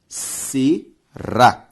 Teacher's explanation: Biométrico tem como sílaba tônica a antepenúltima, por isso uma proparoxítona. Será tem como sílaba tônica a última, ou seja, uma oxítona.